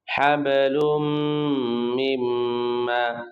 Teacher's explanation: ইদগামে বা গুন্না, গুন্না সহ মিলিয়ে পড়তে হয়।